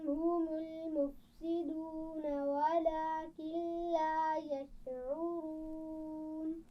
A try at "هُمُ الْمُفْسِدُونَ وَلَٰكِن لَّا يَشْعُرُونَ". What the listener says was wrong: شاباش.